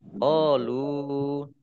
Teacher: Qalu fathah alif mat tabi'i panjang 2 harokat